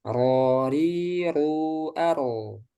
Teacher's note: takrir yaitu bergetarnya ujung lidah ketika pengucapan hurufnya dengan getaran yang halus disebabkan sempitnya makhraj. Sifat ini hanya dimiliki huruf ro. · Jadi ro ini memiliki sifat takrir. Jadi selain inhiraf dia memiliki sifat takrir atau bergetar. Tapi bergetarnya enggak boleh lebih dari sekali. Nah, di sini ada perhatian ya, enggak boleh ro.